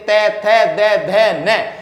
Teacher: जिन व्यंजनों का उच्चारण करते समय जीभ का अगला भाग हमारे ऊपर के दांतों को स्पर्श करता है। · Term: दंतीय व्यंजन